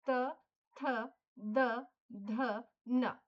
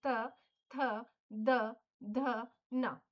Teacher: हम ये दांतों की हेल्प से बोल रहे हैं। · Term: त वर्ग